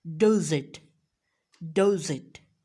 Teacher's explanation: we have ending consonant that is jump over the beginning vowel sound, that is obviously of the next word. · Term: linking